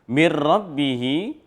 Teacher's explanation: nun mati ketemu dengan ra, lam ra, idgham bila gunnah, mir rabbihi, maka dia tanpa adanya dengung atau gunnahnya.